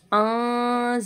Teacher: नून साकिन के बाद ज़ा आ रहा है, इख्फा का गुन्ना करेंगे